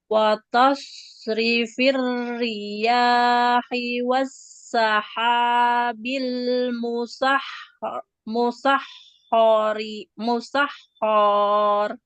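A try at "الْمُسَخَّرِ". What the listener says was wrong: Ho-nya nggak boleh panjang. Wassahabil musakhkhari bainas sama.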